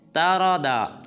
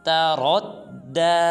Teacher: بعض مسلمان اس حرف کو پڑھ دیتے ہیں ترادا، یہ بالکل غلط ہے۔ را کو پورا ادا کریں گے، پھر را کو آگے دال مشدد کے ساتھ ملائیں گے اور پڑھیں گے تردى۔